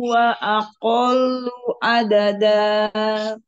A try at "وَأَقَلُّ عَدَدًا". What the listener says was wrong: Lamnya lebih ditekan لم... Wa aqallu. Itu lamnya ada tasdidnya jadi ditekan dulu. Wa aqallu adada.